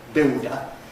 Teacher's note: The slight complication here, of course, is that the L is dark, velarized, and increasingly people in the London area don't really make a lateral, but just produce an O vowel instead. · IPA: ˈbɪodə